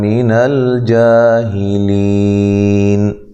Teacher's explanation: من الجاہلین، لام کو ہلانا نہیں ہے، جا الف مدہ کے قائم مقام ہے. ہی لی یا مدہ ہے، وقف کی صورت میں مد کر سکتے ہیں